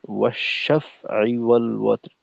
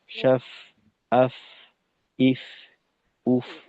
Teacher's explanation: ফায়ের আওয়াজটাকে কিছুটা নমনীয় করলে ভালো হয় যেন শক্তর মতো না হয়